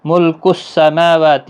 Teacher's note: میم اور واو دونوں کے اوپر کھڑی زبر ہے، 1 الف کی مقدار کے برابر کھینچیں